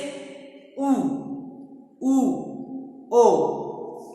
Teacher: पहला है वर्तुल, वर्तुल मतलब गोली, ऐसे स्वर जिनके उच्चारण में हमारे ओंठ गोल हो जाते हैं बोलने में